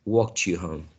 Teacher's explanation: if you get t plus y, you get ch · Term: coalescence